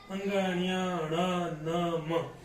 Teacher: नासिक्य व्यंजन यानी जो नाक से बोले जाते हैं, जिनके उच्चारण करते समय नाक से प्राणवायु बाहर निकलती है